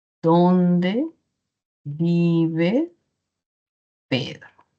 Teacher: Podríamos decir, ¿dónde vive Pedro? Y es descendente. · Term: tono final descendente